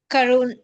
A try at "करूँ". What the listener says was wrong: Forget about na. Just say karu. Karu. Just say karu. Karu. Do not press on the sound of na. Don't emphasize on that sound.